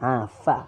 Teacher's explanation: Yang pertama, fa berbaris di atas, bunyinya adalah fa. Fa, bibir bawah, sentuh bawah gigi atas.